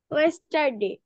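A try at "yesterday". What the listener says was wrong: ইয়েস্টারডে, ওয়েস্ট না, ইয়েস। ইয়েস্টারডে।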